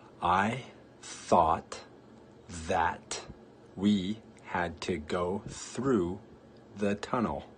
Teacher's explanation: เป็นเสียงพยัญชนะเสียดแทรกโดยที่ปลายลิ้นนะคะของเราจะอยู่ตรงขอบฟันบนค่ะ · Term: TH consonant sound